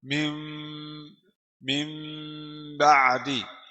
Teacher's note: Min ba'di kita ganti nun ke mim. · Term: iqlab